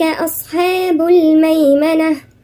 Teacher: أولئك هنا في مد متصل 4 حركات